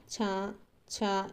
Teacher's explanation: తాలవ్యాలు అంటే దవడ సహాయంతో మనము పలుకుతే వాటిని తాలవ్యాలు అంటారండి. సో వీటికి ఎగ్జాంపుల్స్ వచ్చేసి ఈ గాని ఈ నెక్స్ట్ చ ఛ ఇవన్నీ దౌడల సహాయంతో పలుకుతామ అన్నమాట.